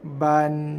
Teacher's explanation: maintain ba satu harakat, ba, lepas tu n kita baca dia dengan lembut je, ban, bukannya ban.